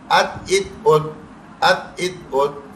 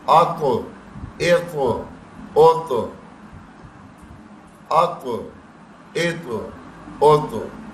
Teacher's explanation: اگر موٹے تو کے ساتھ پڑھیں گے تو ایک قلقلہ بھی کرے گا اور تھوڑی سی موٹی آواز بھی آئے گی